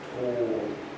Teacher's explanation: we get a little bit closer to ooh. So we're sort of equidistant between English pure O and ooh. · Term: closed O